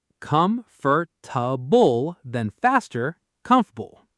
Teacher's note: The middle vowel just vanishes.